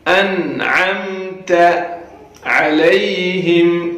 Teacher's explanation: علی اس یا کو یا لین کہتے ہیں، اس کو بھی نرمی کے ساتھ جلدی ادا کرنا ہے.